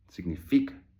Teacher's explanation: The emphasis is on the penultimate syllable